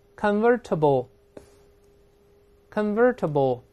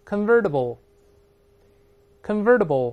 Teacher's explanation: 读快了以后这字母 T 有个轻轻浊化成的这个声音